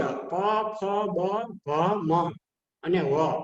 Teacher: પછી ઓષ્ટ્ય પ, ફ, બ, ભ, મ અને વ. વ છે એ દંત્ય અને ઓષ્ટ્ય બંને સ્થાનમાં છે, એનું સ્થાન બંને છે.